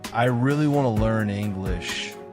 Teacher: the words really, want, and learn are pronounced more strongly, while the others are softer. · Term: sentence stress